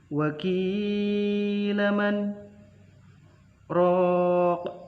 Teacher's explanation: ada kasroh bertemu dengan huruf ya sukun yang dibaca panjang, berarti itu mad tabi'i. Lalu wakilaman ada huruf bacaan sakta yang berarti berhenti, dua ketukan tanpa mengambil nafas.